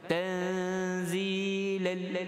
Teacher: Kita idgham masuk tanpa dengung.